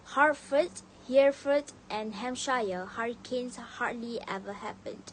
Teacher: They would pronounce all the H sound crisply, use even inonation and speak with confidence.